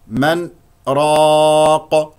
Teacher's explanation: سكت لطيف على النون من غير اخذ بنفس النفس من غير اخذ نفس جديد من راق لا اقول من راق واضح السكت هذا هو انه